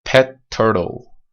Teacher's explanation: اما اگر به این لغت pet turtle نگاه بکنید، وقتی ما اینو میخوایم از gemination استفاده بکنیم، لغت تی که یک در واقع unvoiced blocked consonant هست رو یه مقدار نگه میداریم، هولد میکنیم قبل از اینکه کامل ریلیسش بکنیم. پس تلفظش میشه چیزی شبیه pet turtle.